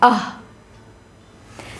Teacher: कंठ। विसर्ग का उच्चारण कंठ से होता है, अह। इसके बाद है कंठोष्ठ दीर्घ स्वर वर्ण कौन सा है?